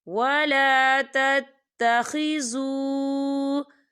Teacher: واو ساکن ہے اور واو ساکن سے پہلے پیش ہے تو یہاں پر واو مدہ ہو رہا ہے، اور اس پر مد بھی ہے، تو ہم اسے چار حرکت کے برابر کھینچ کے پڑھیں گے۔